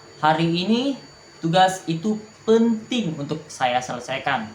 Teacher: Penekanan pada kata penting untuk menegaskan urgensinya atau betapa pentingnya untuk kita selesaikan.